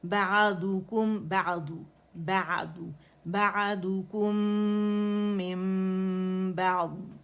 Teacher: ضاد کی بھی استطالت اور رخاوہ واضح کریں گے، آواز چلے گی. لیکن اس میں قلقلہ بعض بعض نہیں کر، یعنی جیسے ہم کہتے ہیں نا اد اد اد، تو ادو اد نہیں کریں گے، بعض آواز چلے گی.